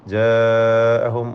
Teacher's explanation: മുത്തസിൽ വാജിബ്, ദീർഘം നിർബന്ധമായി നീട്ടണം.